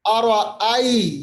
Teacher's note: یا ساکن ما قبل زبر یا لین مطلب نرم آواز کرنا